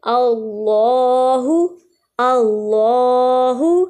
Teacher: حمزہ کے اوپر زبر۔ اس کا مطلب اللہ کا لام جو ہے وہ اس میں موٹا ادا ہوگا، اس لیے اس کو پڑھیں گے اللہ، اللہ، اسی طرح واللہ، فاللہ۔ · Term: لام موٹا